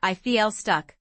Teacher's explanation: the L links to the next word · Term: linking